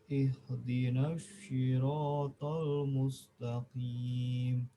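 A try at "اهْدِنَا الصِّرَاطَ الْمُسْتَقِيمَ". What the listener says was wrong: Jadi si, bukan si, bukan seperti orang bersiul. So, si. Ihdinas si.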